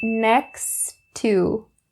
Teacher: The first point that you should keep in mind is upon the words next and to, because next ends with a t sound and to begins with a t sound as well. So we drop one of the t and just say next to.